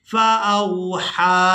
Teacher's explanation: हा को खड़ी जबर और मद की वजह से खींच कर अदा किया जाएगा।